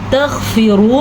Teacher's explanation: تغفروا میں غین جو ہے اسے پر پڑھیں گے کیونکہ غین حروف مستعلیہ میں سے ہے، اور را کو ہم پر پڑھیں گے کیونکہ را کے اوپر پیش ہے